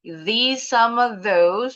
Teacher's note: Bunyi s-nya seperti z emang z ini bunyinya z.